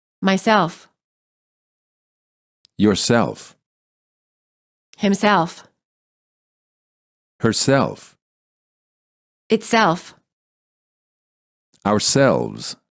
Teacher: Reflexive pronouns. Stress. The last syllable.